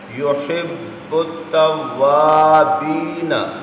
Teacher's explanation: باؤ پر جماؤ بھی کریں کیونکہ حروف قلقلہ مشدد ہوں تو جماؤ سے ادا کرتے ہیں